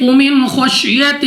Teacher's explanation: نون ساکن کے بعد خا حروف حلقی میں سے ہے، اظہار کا قاعدہ ہے، غنہ نہیں کریں گے یعنی بغیر غنہ کے یہاں پہ پڑھا جائے گا